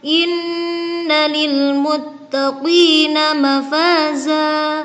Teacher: terdapat bacaan ghunnah sebab ada huruf nun yang bertasydid